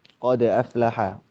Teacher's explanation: Qod aflaha di sini huruf dal sukun ya. Huruf dal sukun memang ada sifat apa? Qalqalah ya